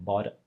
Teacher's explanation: we don't let the tongue flip several times